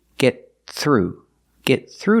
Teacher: stop the air and link to the next word